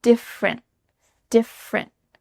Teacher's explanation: You're going to say different, but you don't let that little final puff of air come out.